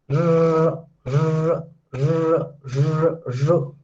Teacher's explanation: Retroflex sounds where your tip of the tongue is bent.